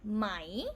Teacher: technically this one we will pronounce as mai rising tone but because tai changes pretty fast we don't really say mai